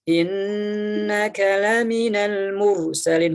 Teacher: Setiap nun tasydid maka baca gunnah. 2 harokat, tahan 2 harokat, lamakan, alirkan suara ke rongga hidung